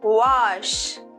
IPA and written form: wɑːʃ (wash)